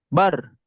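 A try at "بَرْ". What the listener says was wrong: Bukan bar. Bukan. Ro-nya nggak bergetar ya. Bar. Bar.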